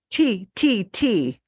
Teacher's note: if you do this t t t you feel a puff of air